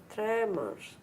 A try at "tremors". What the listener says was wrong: And what did I do that was different to you? What am I changing? What am I doing with the schwa? I'm making it quicker. quicker.